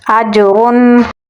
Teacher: تنوین کے بعد غین ہے تو اسے ہم اظہار کر کے پڑھیں گے